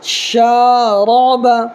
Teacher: اس را کو پر کرنا ہے، اس لیے کہ را کے اوپر زبر ہے